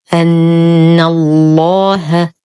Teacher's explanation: أن الله نشد النون بغنة أكمل ما تكون، ننتقل من فتحتها إلى تشديد اللام المغلظة في اسم الجلالة جل في علاه لأنها سبقت بالفتح، نرقق الهاء ونخلصها من تغليظ اللام، فنقول أن الله على ما الطبيعي بمقدار حركتين.